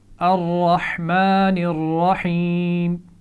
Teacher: اگلی آیت پڑھتے ہیں، الرحمن الرحیم، اس آیت میں غور کیجئے، دونوں را کو سبز رنگ دیا گیا ہے، اس کا مطلب یہ ہے کہ ان کو موٹا پڑھنا ہے۔ را پر زبر ہے تو یہ اصول آپ پہلے بھی سیکھ چکے ہیں کہ اس کو موٹا پڑھا جاتا ہے